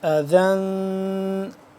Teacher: قل هو، قل هو اذن، ذال دو زبر ذن، ذال نرمی سے پڑھیں گے اور تنوین ہے اس پہ ہم اخفا کریں گے